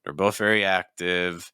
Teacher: Rising intonation on active because there's more information coming.